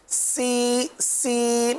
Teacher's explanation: सीन उसमें खाली सीटी की आवाज आएगी सी सी जैसे एस होता है